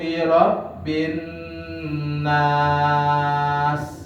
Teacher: Jadi nun di sini tasjid hukumnya ghunnah, itu ditahan 2 sampai 3 harokat gitu nggih.